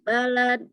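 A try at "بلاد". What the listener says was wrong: Bilad, bukan balad. dia mufrad, lamnya pendek. Balad. Ba, lam, dal. Balad. Ini ba, lam, alif, dal. Bahasanya bilad. Jamak, ya.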